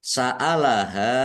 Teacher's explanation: ha fathah alif mad thobi'i panjang dua harakat